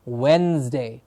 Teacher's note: Please remember the D in the middle of the word is silent.